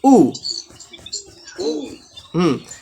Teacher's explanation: হামজা পেশ উ, ধাক্কা দিয়ে হামজা পেশ উ। হামজা যেহেতু ধাক্কা দেওয়ার একটা হরফ, তো ধাক্কা দিয়ে পড়তে হবে